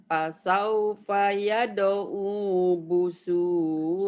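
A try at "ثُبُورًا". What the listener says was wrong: Suburo bukan busuro terbalik.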